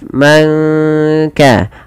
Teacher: langsung kepada makhraj daripada huruf kaf dan ditahan dua harakat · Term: ikhfa hakiki